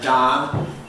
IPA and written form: dɑːn (Don)